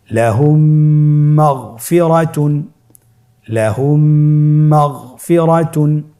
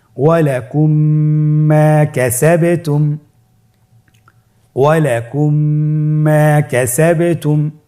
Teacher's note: মিম সাকিনকে পরবর্তী মিমের সাথে মিলিয়ে পড়তে হবে গুণনার সহিত